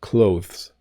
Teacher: If you are in Britain, though, if you are learning a British pronunciation, you do hit the th a little bit.